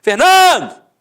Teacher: a penúltima sílaba é a sílaba tônica